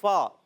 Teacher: فا کا مخرج اوپر والے دانتوں کے کنارے جب نیچے والے ہونٹ کے تر حصے سے لگتے ہیں تو ادا ہوتا ہے فا